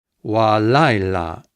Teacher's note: Before an accented syllable, sometimes it becomes wa with kametz. Wa laila. Notice the accent is here.